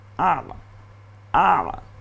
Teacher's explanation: ইন্না, এরপরে আলিফের উপর জবর, ওকে আকার দেওয়ার মতো হলো আ। এরপরে আইনটা গলায় চাপ দিয়ে যজম আকারে বলুন